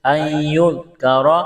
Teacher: اس نون کو بھی نہیں پڑھیں گے، نون کا یا میں ادغام کریں گے